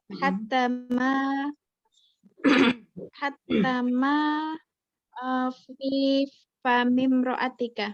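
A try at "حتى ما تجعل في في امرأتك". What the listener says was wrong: Hattama taja'alu. Oke, kurang taja'alunya tadi.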